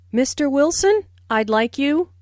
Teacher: notice the rising intonation on Mr Wilson which is used to address someone listen for the D in I'd like this means I would